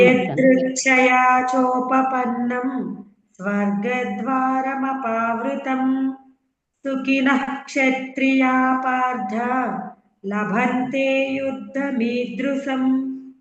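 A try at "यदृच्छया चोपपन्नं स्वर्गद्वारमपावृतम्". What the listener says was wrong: బాగుందమ్మా.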